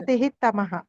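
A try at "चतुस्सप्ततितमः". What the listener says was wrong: చతుస్సప్తతి తమః. విసర్గ తీసేయాలి మనం. సప్తతిహిలో విసర్గ చెప్పకూడదు మనం. పక్కన తమః కలిపేయాలి కదా. చతుస్సప్తతి తమః.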